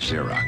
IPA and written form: ˈzɪərɒks (Xerox)